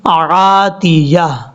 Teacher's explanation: تا کے بعد جو یا ہے یا کو بھی کلیئر کرنا ہے. وقف کریں گے تو تا کو ہا سے بدل دیں گے یعنی عاتیہ